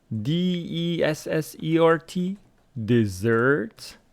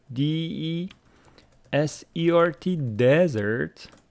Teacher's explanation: stress on the second syllable, dessert. Desert on the first syllable.